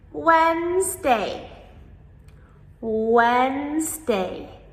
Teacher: So even though we spell it W-E-D, we do not pronounce the D. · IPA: /ˈwɛnzdeɪ/